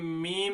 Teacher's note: अब हम मीम अदा करते हैं, मीम, तो दोनों होंठों की खुश्की का हिस्सा मिलता है, तो इसलिए मीम का मखरज हुआ दोनों होंठों की खुश्की का हिस्सा